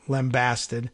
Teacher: the emphasis is slightly on the first syllable in lambasted